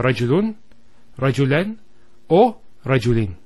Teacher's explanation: it's giving the sound of a noon with a sukun at the end of the word. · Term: tenwin